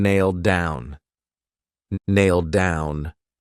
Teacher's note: So it's pronounced exactly the same as nail down, but if you say it together, that D is used for both.